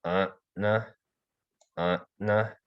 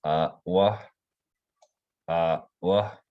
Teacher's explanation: you can hear kind of a glottal stop right as I'm about to say the letter